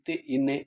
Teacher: நாக்கின் நுனி மேல்வாய் பல்லின் அடியை பொருந்துவதால் பிறக்கும்.